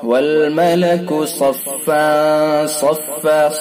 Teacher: تنوین کے بعد فا کے اوپر 2 زبر کی تنوین ہے، تنوین کے بعد اخفا کے 15 حروف میں سے صاد لہذا اخفا ہوگا، اخفاء حقیقی. صفا صفا غنہ کریں گے، خیشوم سے ادا کریں گے، صاد کو پر کر کے پڑھیں گے